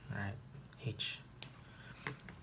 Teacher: this is hey so there's a each there which is a glottal fricative h voiceless glottal fricative